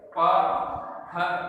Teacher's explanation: पहले दोनों होठ बंद हो रहे हैं, उसके बाद में खुल रहे हैं, तो ये उ प ह ब, बिना होठों को मिलाए हुए इनका उच्चारण नहीं होगा। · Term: ओष्ठ वर्ण